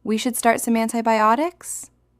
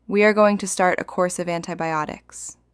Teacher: Senior consultants use falling intonation.